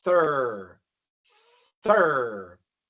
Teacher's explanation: coloco la punta de mi lengua debajo de los dientes, pero luego se desaparece porque le estoy apuntando hacia atrás para pronunciar la r.